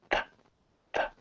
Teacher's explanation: as soon as I pull my tongue away it's a puff of air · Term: th sound